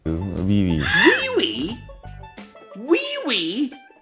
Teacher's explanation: In this example, really is pronounced as wee wee. Not only did the speaker not distinguish between the two sounds r and l, he replaced the sounds with wu.